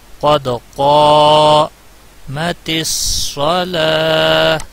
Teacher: دال پہ قلقلہ ہوگا، قاف کو کھینچا جائے گا. قد قامت الصلاۃ، لام کے اوپر کھڑی زبر ہے اور وقف کی صورت میں گولتا ہا میں بدل جاتی ہے.